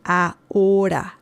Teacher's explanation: There is no sound. The letter H has no sound in Spanish.